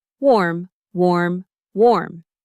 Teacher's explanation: It has the o sound. That's rounder, more like an aw sound.